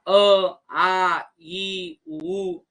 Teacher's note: बघा तुम्ही बोलून बघा अ, आ, ई, उ हे यांचा उच्चार करताना मुखातील कुठल्याही अवयवांशी यांचा स्पर्श होत नाही आणि मुखावाटे जो दोन्ही बाहेर पडत असतात त्यांना आपण स्वर असे म्हणतो.